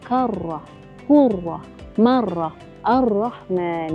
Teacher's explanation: Huruf ra memang ada getaran tetapi tidak perlu berulang getaran tersebut. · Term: sifat at-takrir